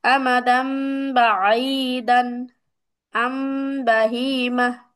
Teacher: এখন দেখো এখানে কি বলছে, নুন সাকিন বা তানবিনের পর উক্ত হরফটি আসলে উক্ত নুন হরফটিকে মিম দ্বারা পরিবর্তন করে পড়তে হয়। তাহলে নুন সাকিনের পরে যদি বা আসে, তাহলে নুন সাকিনকে মিম দ্বারা পরিবর্তন করে পড়তে হবে।